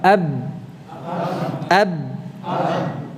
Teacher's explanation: Suara kita terhenti di mana? Di antara bibir. Di antara kedua bibir, syafatain.